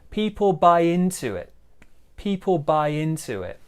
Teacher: small stress on buy, big stress on into. And also, we've got a bit of linking there with the W sound.